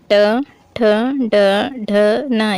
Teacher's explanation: मूर्धन्य से, मूर्धा, जिसमें जीभ ऊपर की ओर लटकती है